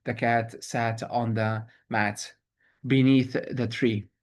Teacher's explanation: That's 10 syllables, alternating unstressed, stressed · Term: iambic pentameter